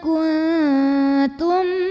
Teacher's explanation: Karena huruf ta makhrajnya masih dekat dengan nun, maka yang ini dengungnya dikit aja. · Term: ikhfa aqrab